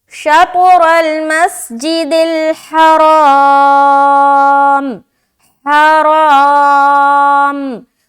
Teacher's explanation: را کو کھینچیں گے بھی کیونکہ الف مدہ ہے، الف خالی اس سے پہلے زبر، اور را موٹا بھی ہوگا اور کھینچا بھی جائے گا.